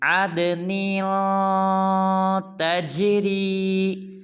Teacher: عد کی دال کو قلقلہ کریں گے یعنی کہ ہلائیں گے